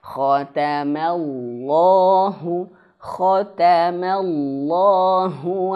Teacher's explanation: Jangan mo, tapi ma. Mulutnya dibuka, disenyumkan.